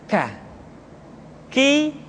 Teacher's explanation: diucapkan dengan mengangkat pangkal lidah kita ke posisi di depan huruf qaf